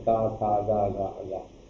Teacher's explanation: का वर्ग के अंतर्गत का था गा गा गा, ये जो वर्ण आते हैं ये कंठ ध्वनि का कहा जाता है। कौन सी ध्वनि, कंठ ध्वनि।